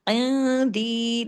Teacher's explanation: نون ساکن کے بعد دال ہے، اخفا حقیقی، غنہ کاملہ ، عندی، دال یا زیر دی، 2 حرکات کھینچے گا، خزائن